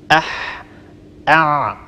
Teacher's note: طبعا الحاء والعين هما من مخرج واحد، كلاهما يخرج من وسط اللسان من منطقة لسان المزمار. جربوا أح أع، لاحظوا أنهما من مخرج واحد من وسط اللسان.